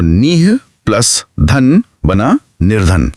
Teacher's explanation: जब इस ध्वनि से पहले अ या आ को छोड़कर कोई और स्वर हो जैसे निह में इ है ठीक है और बाद में कोई सघोष वर्ण हो जैसे धन का ध तो ये ह की ध्वनि हमारे मुंह में स्वाभाविक रूप से र में बदल जाती है।